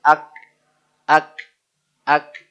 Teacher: memang nafas keluar tapi sangat singkat